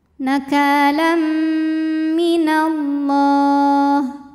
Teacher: karena ada tanwin fathah menghadapi huruf mim, maka tanwinnya masuk ke mim. Nakalam disertai dengungan. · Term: idgham bi gunnah